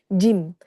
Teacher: tengah lidah ya, bertemu langit tengah-tengah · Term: jimnya